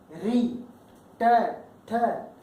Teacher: हमारी जो जिह्वा है उसका अग्रभाग वहां पे स्पर्श करता है जहां तालु की समाप्ति होती है और दांतों का मूल होता है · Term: मूर्धन्य